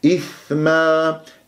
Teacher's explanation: ثاء مخرج ضعيف تحتاج إلى جريان للصوت والنفس